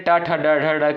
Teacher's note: यह दोस्तों आपका जो है मूर्धा से उच्चारित होने वाला वर्ड है